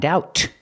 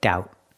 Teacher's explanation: And the T at the end is a stop T.